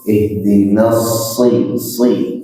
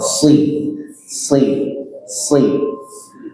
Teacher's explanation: shadnya shad kasrah, shad yang maksurah ya, itu tebal gitu. Nah, jadi disempurnakan tebalnya.